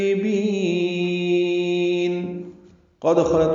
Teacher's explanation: قد خلت میں قاف پر پڑھیں گے، دال ساکن ہے، اس پہ قلقلہ ہوگا. قد خلت خا پر پڑھیں گے، لام باریک پڑھیں گے، تا بھی باریک پڑھیں گے اور اس پہ ہمس ہوگا.